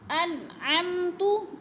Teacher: نون ساکن کے بعد عین حروف ہلکی میں سے ہے تو اظہار ہے، غنہ بالکل نہیں کرنا